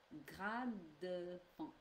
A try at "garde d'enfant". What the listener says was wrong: Garde. Alors, you say the R before the A, and it's the other way around. It's garde.